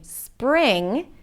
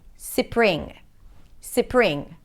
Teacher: they might add an e sound between the s and the p